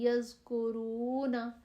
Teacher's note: زال کی آواز باریک اور نرم ہوتی ہے